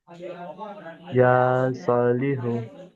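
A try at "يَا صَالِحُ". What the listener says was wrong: ইয়ার উপরে কি আছে? ইয়ার উপরে খাড়া জবর আছে তো? খাড়া জবর কেমন পড়তে হয়? আচ্ছা, সদের উপরে কি আছে? কেমন পড়তে হয়? তাহলে এই দুটোকে এক আলিফ টান দিয়ে পড়তে হবে।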